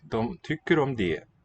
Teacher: in det, we have a T that's written but not pronounced.